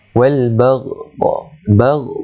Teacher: Wal baghdha, tu kena panjang 4 ataupun 5 harakat kerana dia telah menjadi hukum mad wajib muttasil.